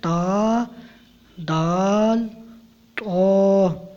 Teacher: زبان کی نوک اور اوپر کے دانتوں کی جڑ سے ادا ہوتے ہیں